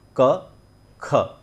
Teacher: क में के का उच्चारण ही होता है क, लेकिन जब हम ख की बात करते हैं तो उसमें ह का उच्चारण और जुड़ जाता है। के एच आपने देखा होगा अंग्रेज़ी में भी हम लिखते हैं, ख को के एच लिखते हैं। · के एच लिखने का मतलब यही है कि हम उसमें क और ह दोनों का उच्चारण करेंगे। तो क, ख, क में ह जोड़ा और उसको हमने जब उच्चारण किया कंठ से तो वो बना ख